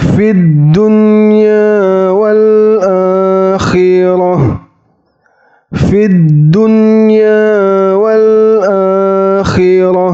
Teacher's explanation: Nun sukunnya jelas dan ya bertanda baca fathhahnya juga harus jelas tidak boleh didengungkan